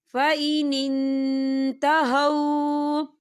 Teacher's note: ہم نون ساکن کی آواز کو ناک میں چھپائیں گے۔ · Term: اکفا